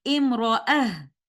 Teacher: And other than these 7 places, where 2 of them appears in one ayah, the word imra'ah is written with ta marbuta, the round ta, and upon continuation, we will follow the vowel of ta marbuta, and upon stopping, we will say imra'ah, reciting ta marbuta with ha sakina